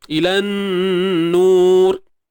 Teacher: ra ni dia sifat asli dia dah ada getaran dia. Takrir.